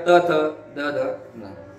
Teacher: जे वर्ण उच्चारताना जिभेचे टोक आपल्या दाताला लागते त्याला आपण दंत्य असं म्हणतो.